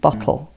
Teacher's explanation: your T's at the back of your throat, not with your tongue behind your teeth